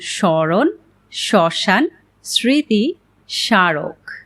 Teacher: পদের আদ্য ব্যঞ্জন বর্ণে ম ফলা সংযুক্ত হলে সাধারণত তার কোনো উচ্চারণ হয় না, তবে প্রমিত উচ্চারণে ম ফলাযুক্ত বর্ণটি সামান্য নাসিক্য প্রভাবিত হয়